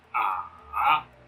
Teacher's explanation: The third tone, which is falling and then rising